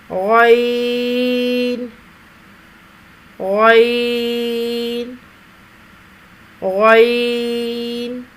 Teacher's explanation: 3 حرفی آواز 2 گنا کھینچ کر ادا ہوگی۔ زبان کی جڑ کو تالو کی طرف بلند کرتے ہوئے موٹی آواز میں ادا کیا جائے گا۔